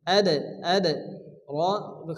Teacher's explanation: দিয়ে পড়তে হবে ওয়ামা আদরাকা এখানে দালের উপর কি আসছে জজম দালকে কলকলা করে হালকা ধাক্কা দিয়ে পড়তে হবে